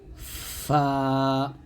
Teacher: ঠোঁটের পেট উপরে দুই দাঁতের অগ্রভাগ হতে উচ্চারণ করতে হবে অর্থাৎ নিচে ঠোঁটের পেট উপরে দুই দাঁতের আগার সঙ্গে লাগিয়ে এই ফা টা নরম ভাবে আওয়াজ জারি রেখে উচ্চারণ করতে হবে এরকম ফা আর ফা উচ্চারণ করার সময় অবশ্যই বাতাস বের করবেন